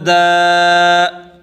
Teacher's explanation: دال کو ایک الف کے برابر کھینچ کر پڑھیں گے